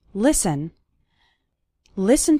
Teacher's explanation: the letter T is silent in the word listen